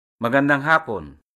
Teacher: happen when stressed on the first syllable means afternoon